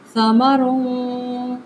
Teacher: यहाँ पे मैंने तनवीन की थी, यानी तनवीन के ऊपर क्या किया, इख्फ़ा किया। समरुन, नाक के बांसे में आवाज़ को छुपा दिया